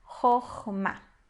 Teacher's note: A segunda sílaba a gente vai ler como A, porque apesar de ser uma sílaba fechada, ela é uma sílaba tônica. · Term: kamatz